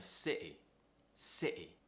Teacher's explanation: we're creating some tension in our throat and we're cutting off the sound before the t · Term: glottal t